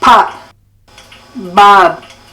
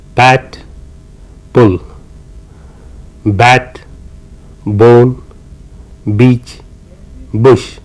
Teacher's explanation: p and B you can see the lady out there where she's pressed her lips firmly together in order to articulate p as well as B